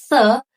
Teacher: you can try to put your tongue between your teeth to say the and then give voice or more vibration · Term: dental